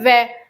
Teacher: दोनों जो हमारे होठ हैं वो उसमें सक्रिय होते हैं। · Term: ओष्ठ